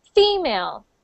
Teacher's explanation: it's the stress on the first syllable. So female, not female.